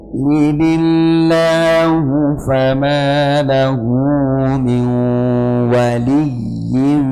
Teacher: berbeda satunya wlilillahu ada nun mati ketemu ya dibaca idgham bunah cara bacanya dengan memasukkan tanwin ataupun Nun ke dalam ya disertai dengan ghunah atau dengung ya jadi aslinya tasdid di sini cuma sebagai e tanda bantu